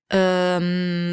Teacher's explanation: Right before the M sound, that's an uh, that's a schwa sound. That's the neutral sound.